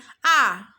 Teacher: এবার যদি আ বলেন তাহলে নিম্ন হয়ে যাবে, যেমন আ, নিম্নে এটা মধ্যে, ঠিক মধ্যে, আমার জিভের অবস্থানটা ঠিক মধ্যে